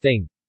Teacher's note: a voiceless dental non-sibilant fricative, as in English thing